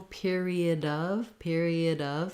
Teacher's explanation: the word of is actually a schwa and a v